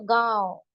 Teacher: और नून गुना है तो गांव है ना? नून का साउंड नाक में झांक कर आ रहा है। छुप कर आ रहा है।